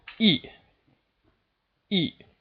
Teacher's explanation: And the final tone is just the sharp downward dropping fourth tone.